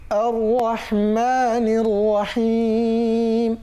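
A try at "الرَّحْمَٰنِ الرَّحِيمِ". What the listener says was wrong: এখানে তিনটা ভুল হয়, রহ চাপ হয় না, মা একালি টানতে হবে, নির রহিম র মোটা করতে হবে এবং হিম চাপ দিতে হবে।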